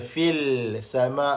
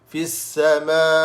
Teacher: Alif lam syamsyah. Terus kita masuk kepada sin. Fis, jangan baca fil sama, salah.